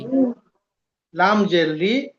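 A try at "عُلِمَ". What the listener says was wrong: না লাম জের লি, না লাম জের লি বলে দুটো অক্ষরের উচ্চারণ আগে তুলে নেন, তারপরে মিম ধরবেন।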